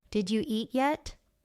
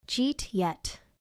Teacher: Did you eat turns into jeet? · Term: connected speech